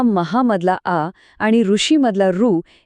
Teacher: महामधला आ आणि ऋषीमधला रू एकत्र येऊन महर्षीमध्ये अर असा उच्चार तयार झाला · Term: गुण संधी